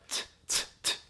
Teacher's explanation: It's an often an aspirated t sound. A lot of air comes out.